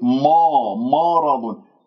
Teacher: قلوبهم ما، لا تقول مرض، لا تفخم الميم بسبب مجاورتها للراء المفخمة والضاد المفخمة